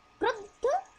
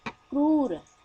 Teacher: क्रुद्ध, देखिए झटका लग रहा है। क्रूर, आराम से बोल रहे हैं।